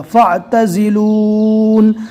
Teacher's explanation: حرف پر جزم ہے، لہٰذا الف کو چھوڑ دیا جائے گا، عین پر جزم آ گیا لہٰذا اس کو ڈائریکٹ فا سے ملا دیا جائے گا